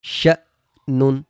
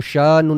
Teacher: اس کو جھٹکا دے کر پڑھتے ہیں، حروف مدہ کی طرح نہیں پڑھتے، یعنی کہ اس پہ ہم کھینچ کر نہیں پڑھیں گے، اس کو حروف مدہ نہیں پڑھیں گے بلکہ اس کو جھٹکا دیں گے.